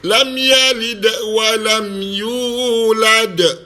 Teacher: Jadi qalqalah yang akhir lebih tinggi daripada qalqalah yang berada pada pertengahan lam yalid sikit je. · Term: qalqalatul kubra